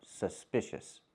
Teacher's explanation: Don't use the oo sound like moon and soon. Use the sound like cup and up.